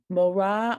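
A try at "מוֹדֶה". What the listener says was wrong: Careful, that's a dalid in that word, not a resh.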